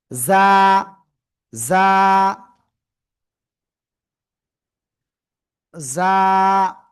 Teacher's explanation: জিহ্বার আগা, সামনের নিচের এই যে দুই দাঁত, দুই দাঁতের পেটও আগার সাথে লাগাবো, লাগিয়ে চিকন আওয়াজে আমরা এই অক্ষরটা উচ্চারণ করব। ঠিক আছে, জিজি পোকার ন্যায় আমরা উচ্চারণ করব।